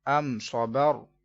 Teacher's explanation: تو اظہار شفوی غنہ نہیں کریں گے